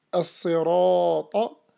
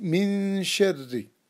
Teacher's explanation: The letter ra, heavy, as-sirata, light, min sharri